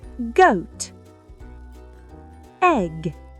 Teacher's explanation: Le G est la version sonore du K. Il doit être bien net.